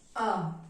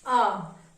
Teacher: Open. जिसका उच्चारण करते समय मुंह जो है आपका वो पूरा खुला रहता है, पूरा खुला रहता है। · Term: विवर्त